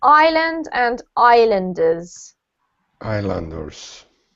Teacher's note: we have an s in the word but it's silent